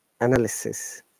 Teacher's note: in this word, there are two Schwa sounds. The first A is a Schwa sound, as you can see, and the Y is also Schwa sound, and it should be pronounced like this: analysis, not lysis.